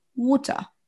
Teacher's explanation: Vous entendez, il n'y a pas de A et on n'entend pas de R.